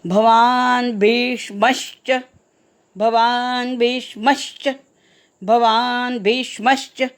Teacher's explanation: भीष्मच्या मवर आघात येईल कारण पुढे च हे जोडाक्षर आलं आहे